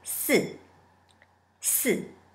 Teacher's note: You can think of the letter S first and then remove the A sound. Just keep the S sound and then put the fourth tone in it.